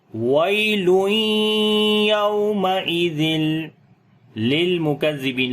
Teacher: تنوین کے بعد یا کا ادغام غننے کے ساتھ کریں گے